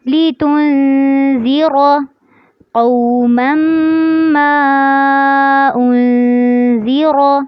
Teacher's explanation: اس میں لِتُنذِرَ شروع میں جو لفظ ہے اس میں را کو آپ نے پر کرنا ہے، قَوْمًا مَّا، جب آپ میم کو آگے میم کے ساتھ ملا رہے ہوں گے تو یہاں پر غنہ کرنا ہے، اور پھر جب آپ میم کو پڑھیں گے ما انذر تو یہاں پر ما کے اوپر مد کرنی ہے، لِتُنذِرَ قوما ما انذر، اس میں بھی را کو پر کرنا ہے.